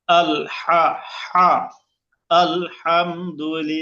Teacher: লিল্লাহ লামটা এক আলিফ টান হবে। লামের ডানে জের আসার কারণে পাতলা হবে।